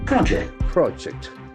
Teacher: since it is a noun the accent falls on the first syllable